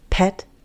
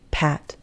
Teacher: They're very similar. They're both front vowel sounds. They're both open, but a is more open.